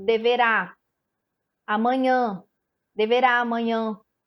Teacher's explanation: A gente percebe com o som que a sílaba tônica no amanhã é o nhã e que a sílaba tônica no deverá é o rá